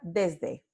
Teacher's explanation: El fonema o la consonante predorso alveolar sorda S se sonoriza, se vuelve en una consonante sonora Z. · Tenemos la transcripción fonémica de, es, de, pero sabemos que cuando la palabra se pronuncia, aquí tenemos esta consonante dental sonora D, esta se vuelve en aproximante · Entonces, esta aquí tiene mismo punto de articulación, mismo modo de articulación, entonces predorso alveolar, fricativa, pero no es sorda, es sonora, porque vibran las cuerdas vocales. Este alófono Z ocurre antes de una consonante sonora por, de nuevo, asimilación